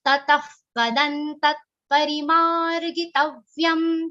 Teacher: in the whole charan, only ma is a long sound. Ri and gi should not become long. Vyam, the last ma should not all be dragged.